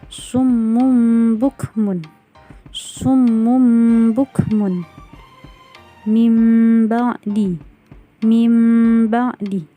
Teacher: Jadi semua nunnya atau tanwinnya ketika bertemu huruf ba, maka suaranya, pengucapannya, dibacanya berubah menjadi seperti huruf mim. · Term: iqlab